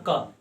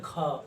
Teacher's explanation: तो सभी वर्गों के द्वितीय चतुर्थ वर्ण और तलावी स, मूर्धनी स, दंती स और ह को महाप्राण कहते हैं, क्योंकि इसमें थोड़ी सी ज्यादा शक्ति लगाना पड़ता है। जैसे उसमें था क, इसमें ख, हकार की ध्वनि उत्पन्न हो रही है।